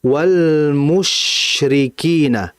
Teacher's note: shin itu dalam kondisi sukun, tafasyi dan hamznya harus jelas. Ya, jadi hamz itu desis, tafasyi itu huruf yang shin berdesis tapi desisannya lebih kuat.